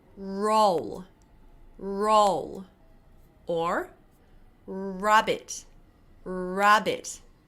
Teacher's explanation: it's the lips that creates that R sound that rolling sound